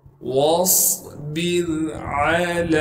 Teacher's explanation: لا الہ الا هو فاتخذه وکیلا واصبر علی، واو کو صاد سے ملائیں گے کیونکہ صاد ساکن ہے اور صاد میں سیٹی بھی ادا کریں گے اور صاد کو موٹا کر کے پڑھیں گے۔ با کو آگے را ساکن سے ملا دیں گے اور را ساکن سے پہلے زیر ہونے کی وجہ سے را کو باریک کر کے پڑھیں گے۔